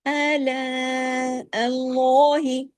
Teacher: اللہ کے نام میں جو لام ہے وہ صرف وہ لام ہیوی ہو جاتا ہے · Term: لام جلالہ